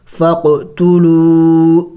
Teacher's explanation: خاف حروف قلقلہ میں سے ہے، ہلا کے پڑھیں گے